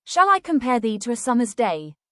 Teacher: The first is iambic pentameter, which is the rhythmic pattern of the poem. Each line contains 10 syllables, arranged in a pattern of unstressed followed by stressed syllables. For example, "Shall I compare thee to a summer's day?" follows this pattern, creating a smooth and musical flow that is typical of Shakespeare's poetry.